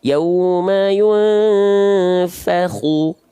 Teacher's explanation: Nama sifatnya isti'la. Jadi kita baca bukan hanya khu, tapi khu, pangkal lidahnya diangkat.